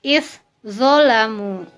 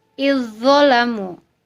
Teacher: Dibaca menjadi izzolamu karena za sukun sudah dimasukkan kepada zo sehingga menjadi zo menjadi tasydid. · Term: idgham mutajanisain